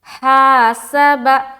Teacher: ہا کو جب ہم ادا کرتے ہیں تو حلق سے ایک ہوا کی سی آتی ہے · میں نے بتایا تھا کہ حلق کے 3 حصے ہیں، ہے نا، ادنائے حلق، اقصائے حلق اور وسط حلق۔ تو اس ہا کا جو مخرج ہے وہ ہے وسط حلق، یعنی حلق کا جو بیچ کا حصہ ہوتا ہے